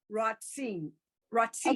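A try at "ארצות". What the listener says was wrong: What's the vowel after the tsa?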